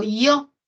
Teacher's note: Tenemos el diptongo yo, donde suena más la O.